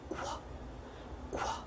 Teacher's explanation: 성대는 울리지 않는 새는 소리입니다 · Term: QU의 소리